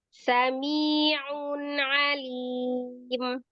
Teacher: Dua-duanya sama ain dengan ain, tidak ada hamzah